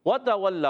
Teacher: واو کی ادائیگی ہوگی ہونٹوں کی گولائی سے